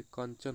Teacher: अनुस्वार जिसको बोलने पर नाक से और मुख से हवा निकलती है।